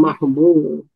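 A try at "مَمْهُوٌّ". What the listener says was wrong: Mimnya dua, sebab mim yang pertama adalah mim isim maf'ul, mim yang kedua adalah mim fa'il, ya kan? Jadi mamhun, bukan mahmud, tapi mamhu.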